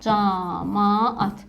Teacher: iki dənə eyniicinsli qoşa sait yanaşı gələn zaman həmin qoşa saitlər bir uzun sait kimi tələffüz olunur · 2 qoşa saytimiz bir uzun sayt kimi tələffüz olunmuş olacaq. Sanki biri düşür, digəri isə uzun tələffüz olunur. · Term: uzanma